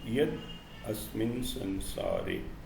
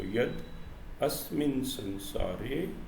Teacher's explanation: the unvoiced sound becomes voiced because of the nature of the sound which follows, is known as assimilation.